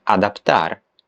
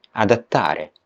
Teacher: Then there is the consonant cluster pt, as in adaptar, which in Italian becomes t, adattare, to adapt.